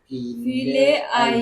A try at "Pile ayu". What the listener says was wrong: Pile ayu. Pile ayu. Not file. P. Pile ayu. P. People. She's pronouncing like phone. P.